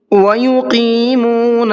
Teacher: یہاں پر قاف کو تھوڑا سا اس کے مخرج سے نکالنا ہے اور منہ بھر کے پڑھنا ہے